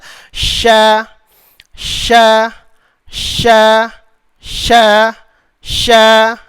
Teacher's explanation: huruf shin pakai tengah lidah. Sya, sya, sya, sya, sya.